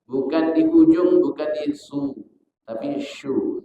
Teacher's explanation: Bukan di ujung, bukan di su, tapi syu. Syu-nya di tengah lidah. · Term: huruf shin